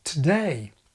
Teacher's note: Any dictionary will tell you that the prefix contains schwa, today. It's a weak syllable, so weak in fact that the schwa can even disappear, today. Well, to do is generally pronounced the same way.